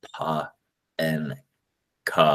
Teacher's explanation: which I'm aspirating just for distinctions